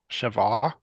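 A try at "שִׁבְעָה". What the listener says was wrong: The dot is an E. Shiv'a, not Shiva, but Shiv break ah. Shiv break ah. Shiv ah. Have a little pause there. That pause is important.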